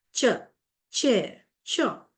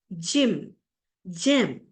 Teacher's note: So these are a combination of sounds. Initially, there is complete closure as for a plosive. This is followed by a slow release with friction as for a fricative. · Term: affricates